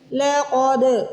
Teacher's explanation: قاف کو موٹا پڑھیں گے، دال پہ قلقلہ کریں گے، یہاں پہ دال کو ہلا کے پڑھیں گے.